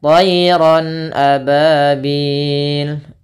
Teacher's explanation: suara tanwinnya harus jelas karena di sini bertemu dengan hamzah.